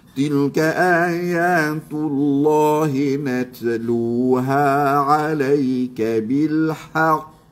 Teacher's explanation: Nah. Ah qalqalah ni pun kena ingat mesti lantunan itu keluar daripada makhraj huruf qaf. Ah jangan dia jadi qalqalah tok wan hang.